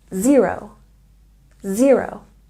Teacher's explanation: You know that 0 has stress on the first syllable.